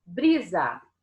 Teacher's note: A última não é a mais forte, o bri é o mais forte, e essa é a penúltima. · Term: paroxítona